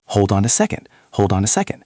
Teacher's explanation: The D at the end of hold moves to the O and on. Then the N at the end of on moves to the A. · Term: linking